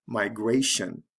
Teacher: it has to shift to the second syllable when we add the tion